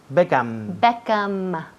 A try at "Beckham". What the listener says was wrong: Todo el mundo aquí dice Beckham con la boca abierta. Beckham, pues cierra. Beckham, M.